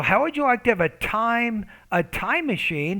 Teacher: with the T, you need more aspiration